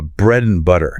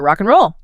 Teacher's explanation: And frequently shrinks down to just n like uh bread and butter.